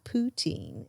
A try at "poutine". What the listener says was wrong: like you say poutine kind of weird. Like I say like poutine. You really emphasis on the poo.